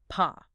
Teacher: Paw is a hard stop. Your lips close.